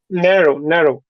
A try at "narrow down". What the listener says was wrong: If it's literal, then you want. If it's literal, you want to emphasize the second word or the final.